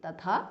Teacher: Tatha, the second tha is Mahapranaha.